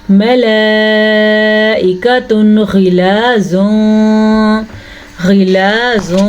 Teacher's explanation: تنوین کے بعد غین آیا ہوا ہے حروف حلقی میں سے، اس لیے ہم اس کو ظاہر کر کے پڑھیں گے